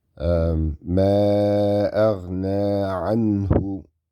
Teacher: This is Idhar, Nun Sakin, followed by a Ha.